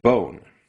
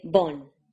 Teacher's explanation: This vowel is very similar to American English's O as in bone. The issue with the vowel in bone is that it's actually two vowels. You start at O, which is where you want to be, but then you go to O.